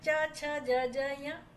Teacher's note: એમાં તાલુમાંથી તાલુ સાથે એ અવાજ અથડાય અને પછી એ ઉચ્ચારણ પ્રગટ થાય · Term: તાલવ્ય